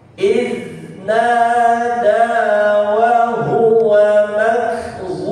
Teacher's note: Huruf zalnya sama dengan huruf kaf sukun, dia tidak boleh dipantulkan.